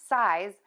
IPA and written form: saɪz (SIZE)